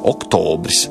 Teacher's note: svešvārdā oktobris sākumā ir īsais O, vārda vidū garais O